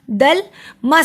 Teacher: ये लाम है, इसको मोटा नहीं करना। दल मस, सीन पर सिटी की आवाज़ आएगी